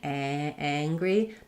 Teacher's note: I can really feel open and I have time to make that a vowel, mad. But when I'm saying angry, the back of my tongue is getting ready to close to the ng. So this ng influences this a vowel and makes it more nasal, makes it higher.